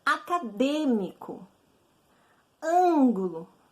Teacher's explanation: veja a ênfase está na antepenúltima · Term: proparoxítona